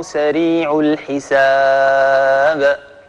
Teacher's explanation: لما وقفنا على الباء هذه كانت القلقلة فيها يعني جلية واضحة لأن الباء ليس بعدها شيء. إذن هذه هي المرتبة الأولى من مراتب القلقلة وهي القلقلة الكبرى.